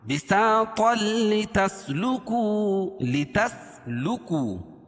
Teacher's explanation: طا کو لام میں ملائیں گے، ٹھیک ہے، ادغام کریں گے لیکن بلا غنہ، غنہ نہیں کریں گے اس میں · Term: ادغام بلا غنہ